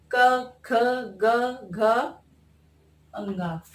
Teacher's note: इनका उच्चारण स्थान कंठ होता है